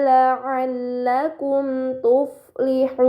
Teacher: terdapat mad bertemu huruf yang disukunkan karena waqaf, ini dinamakan mad arid, maka harus dibaca panjang selama 6 harokat